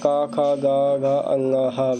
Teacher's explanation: कंठ और जीभ का निचला भाग से बोले जाते हैं इसे कंठ बोला जाता है